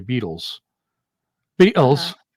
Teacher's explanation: The T is a glottal stop.